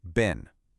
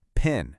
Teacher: That little explosion of air on your hand. That is aspiration.